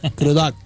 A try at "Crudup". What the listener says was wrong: It's not ducked. Crudup.